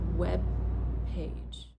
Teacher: You see I held onto the b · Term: unreleased B